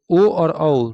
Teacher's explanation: ओ और औ दो ऐसे वर्ण है जिसका उच्चारण स्थान कंठ और ओष्ठ दोनों है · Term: कंठ ओष्ठ